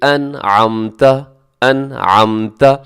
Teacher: تو جیسے آپ دیکھیے گا قرآن پاک میں سورۃ الفاتحہ، انعمتا، آپ اگر کہیں انعمتا، اس میں آپ نے نون کے اوپر کوئی غنے کے لیے کوئی ایکسٹرا کوئی کوشش نہیں کی، بس آواز آپ کی ناک میں گئی ہے کیونکہ آپ نے نون کو ادا کیا ہے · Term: غنہ آنی